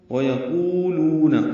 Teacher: وَيَقُولُونَ عَلَى اللَّهِ الْكَذِبَ وَهُمْ يَعْلَمُونَ، وَيَقُولُونَ قاف پر ہے، قو واو مد لو واو مد، 2 حرکات لمبا کریں گے